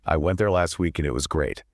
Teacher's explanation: The heavy beats are went, week, and great.